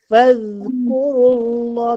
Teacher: Dia zal ni huruf yang jahar. Zal ni adalah huruf yang jahar, maksudnya angin tak terlepas, angin tertahan. Cuma suara je lepas.